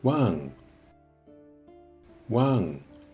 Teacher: yes you heard right it is falling tone